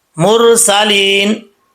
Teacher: मुरसलीन, लाम साकिन है, यहाँ पे कलकला नहीं करना, और रा साकिन से पहले पेश हो तो रापुर पढ़ा जाता है, यहाँ पे रापुर है। सीन में सीटी आएगी, अगर बगैर सीटी के पढ़ेंगे तो समझ लें कि सीन का मखरज सही तरीके से अदा नहीं हुआ। लाम के बाद या है, या साकिन से पहले आपको मैं कई दफ़ा बता चुका हूँ कि ज़ेर हो तो या मद्दा होता है, यहाँ पर या मद्दा है, या साकिन से पहले ज़ेर है, ठीक है।